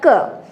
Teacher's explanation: क का उच्चारण करने पर प्राणवायु कंठ से टकरा रही है नाभि से निकलकर, तो क का उच्चारण स्थान हमारा कंठ हुआ।